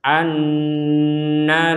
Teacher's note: Nun wajib dengung ditekan dan didengungkan kurang lebih dua harakat